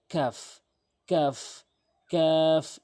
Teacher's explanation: কাফটি হচ্ছে জিব্বার গোড়া হতে উপরে তালু